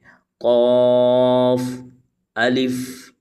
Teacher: قاف حروف مستعلیہ کا حروف ہے، اس کو ہم نے کھینچ کر اور موٹا پڑھنا ہے